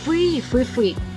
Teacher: роблячи наголос на першому складі